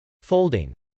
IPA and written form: fˈoʊldɪŋ (folding)